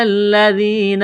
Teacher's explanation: ذال کو پڑھتے وقت زبان تھوڑی سی باہر نکالیں گے